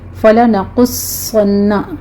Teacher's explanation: فَلَنَقُصَّنَّ، قوف بھی پر ہے، صاد بھی پر ہے، صاد کے اوپر تشدید ہے، سختی سے تھوڑا سا رک کر پھر آگے پڑھیں گے